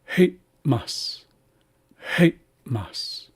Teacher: It's actually a stop. So you're saying hate, and you're closing your glottis very quickly, and then opening again, and then saying mas. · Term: glottalized M